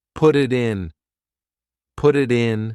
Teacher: Because instead of spending the time to let the air come out of your mouth, your tongue is just tapping the top of your mouth to make a D